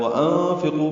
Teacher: وانفقوا میں نون ساکن کے بعد فا کی وجہ سے اخفا ہے، قاف پر ہے، قو واو مدہ ہے۔